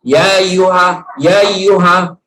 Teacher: artinya memudahkan hamzahnya jadi Hamzah tidak diucapkan